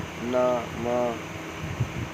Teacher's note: नासिक की जिनके उच्चारण में हवा का प्रमुख अंश नाक से निकलता है